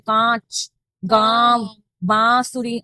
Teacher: अनुस्वार दोनों साथ में लर्न करो, अनुस्वार और अनुनासिक। नासिक, नासिक में नाक से आवाज आती है तो आपकी नाक पे जोर जाता है